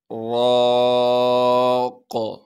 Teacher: را پر زبر ہونے کی وجہ سے را کو موٹا کر کے پڑھیں گے، را کے بعد الف مدہ ہونے کی وجہ سے را کو ایک الف کے مقدار کھینچیں گے، قاف کو وقف کی حالت میں ساکن کر دیں گے، ساکن کی صورت میں پھر یہاں پر قلقلہ ہوگا، یعنی آواز کو ہلائیں گے